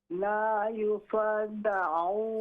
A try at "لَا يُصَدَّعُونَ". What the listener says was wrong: ہاں جی، یصادعون کی بجائے لا یصدعون،